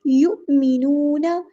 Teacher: الذین یؤمنون، یو حمزہ پہ ہم جھٹکا دیں گے، یو حمزہ ساکن جب ہوتا ہے اس کو جھٹکے کے ساتھ پڑھتے ہیں۔ یؤمنون، نون کو ہم نے لمبا کرنا ہے، ایک الف کے برابر مد اصلی ہو رہی ہے، نون کو ہم نے لمبا نہیں کرنا، حرکات کو ہم لمبا نہیں کرتے۔